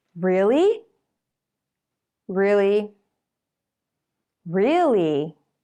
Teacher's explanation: rising falling tone each time but in a slightly different way to sound excited or surprised you start and finish higher but to sound annoyed the tones are lower · you use a rising falling tone each time but in a slightly different way